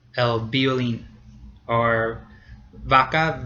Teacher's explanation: La V is probably the most complicated letter in Spanish because in many parts, especially in Spain itself, the V and the B have become the same sound. So in Spain, it sounds exactly like a B, el violín, or vaca, V-A-C-A, is vaca.